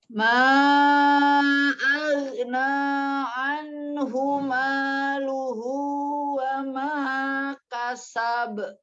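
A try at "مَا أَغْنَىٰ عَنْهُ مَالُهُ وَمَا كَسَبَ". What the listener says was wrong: Bukan ma, tapi ma aghna. Ghain ya, angkat pangkal lidahnya. Aghna. Tidak dipantulkan ya. Ma aghna. Ma-nya panjangkan dulu ya, 4 atau 5.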